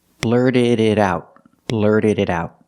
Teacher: The T in blurted is a fast D. The D at the end of blurted is a fast D. The T in it is a fast D.